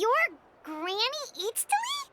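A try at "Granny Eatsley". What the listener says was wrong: But emphasis on Eatsley, not Granny.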